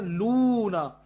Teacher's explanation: लाम और पेश लू, ये है मद्दे असली बिल वाव